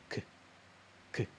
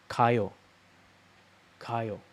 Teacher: The best way to think about it is it's a soft G, right? It's not a plosive one.